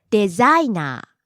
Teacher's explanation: Low to high then back down to low.